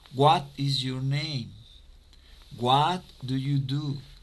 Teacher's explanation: Cuando tenemos un question word, la entonación empieza como con un tono alto. What. Y vamos bajando el tono en la pregunta. Y de esa manera suena más hacia la pregunta.